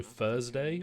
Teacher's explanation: I say Thursday with an f apparently.